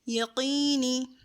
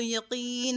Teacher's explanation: یہاں قاف کو خیال رکھیں گے کیونکہ یہ مخرج نمبر 5 ہے اور اس کو پر کریں گے